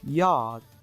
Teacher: /j/ is voiced palatal gliding (or approximant) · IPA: /jɑːd/